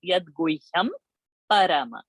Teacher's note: So because pa varga, pa, pa, ba, bha, ma, pa varga's anunasik is ma. So Guhyam's Anuswara will be ma only.